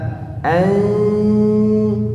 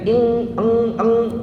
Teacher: Ing, jadi bunyinya ing, eng, ya. Jadi kalau bunyinya eng itu, kalau kita pencet hidung, dia tidak akan mengalir suara.